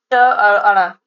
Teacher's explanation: ट यह मूर्धन्य है